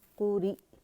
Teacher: حمزہ ساکن ہے تو جھٹکے سے ادا ہوگا اور باریکی سے